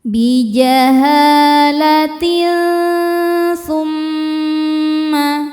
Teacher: Cara bacanya tanwin disamarkan menuju tsa disertai bunyi dengung. Samar dan dengungannya sama besar karena tsa ini makhrajnya tidak terlalu dekat dan tidak terlalu jauh dari nun. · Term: ikhfa hakiki ausat, ikhfa hakiki